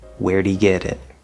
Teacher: we have that glottal stop t at the end of it